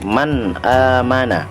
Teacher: cara membacanya nun sukun nya atau tanwinnya dibaca jelas tanpa mendengung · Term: izhar halqi